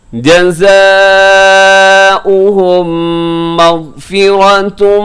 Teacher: ادغام شفی یہاں پہ ہوگا، ملا کے پڑھیں گے دونوں میم ایک کر کے ہم اس کو پڑھیں گے